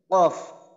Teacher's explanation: জিহ্বার গোড়া তার বরাবর উপরে বাড়াইয়া তালুর তালুর সঙ্গে লাগাইয়া পড়তে হয়